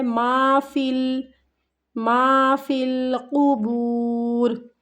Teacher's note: ما کو کھینچنا ہے، فا کو لام کے ساتھ ملانا ہے